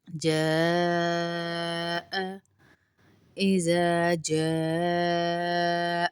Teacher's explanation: اذا ایک الف کے برابر لمبا بھی کریں گے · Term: الف مدہ